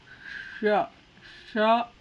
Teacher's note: ಷಟ್ಕೋನ ಶಕ್ಕೆ ಶ ಅನ್ಬೇಕು ಅನ್ನುವಾಗ ನಾಲಿಗೆ ಮಡಚಿ ಹಿಂಭಾಗಕ್ಕೆ ಬಡಿದು ಅದ್ರ ಉಚ್ಚಾರ ಶ ಅಂತ ಆಗ್ತದೆ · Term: ಮೂರ್ಧಾಣೆ ಶ